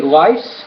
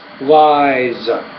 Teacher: the vowel sound which precedes the Z will be longer